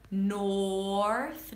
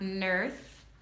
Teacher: make sure you round your lips for the north, not north.